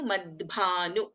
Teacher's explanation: we have ಅಲ್ಪಪ್ರಾಣ ದ and ಮಹಾಪ್ರಾಣ ಭ ಸಂಯುಕ್ತಾಕ್ಷರ